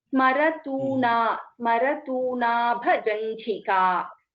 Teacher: There, Smarant is not there. There is no Nakara after Smara.